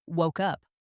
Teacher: It's not woke, then a pause and up. It flows together. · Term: connected sounds